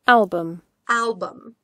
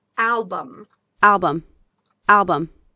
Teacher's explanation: Ударение на первый слог.